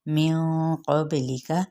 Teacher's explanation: نون پہ اخفاء حقیقی کرنا ہے اور قاف پر پڑھنا ہے ، با پہ قلقلہ، لام زیر کے ساتھ اس کو لمبا